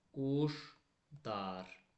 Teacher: sözün tərkibində l samiti, d, t, z, s, j, ş, c, ç samitlərindən sonra gəlsə, l samiti d kimi tələffüz olunacaq.